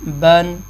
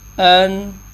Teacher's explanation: تنوین پڑھتے ہوئے آواز آدھا سیکنڈ ناک میں جائے گی، جیسے نون ساکن کو پڑھتے ہوئے جاتی ہے۔